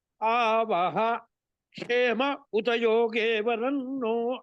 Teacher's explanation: విసర్గలు ఉన్నాయి దాని పక్కన గనుక క్షకారం గనుక వస్తే క్ష గాని క్షే గాని క్షో గాని క్షౌ గాని అక్కడ ఒక్క నిమిషం గ్యాప్ ఇయాలి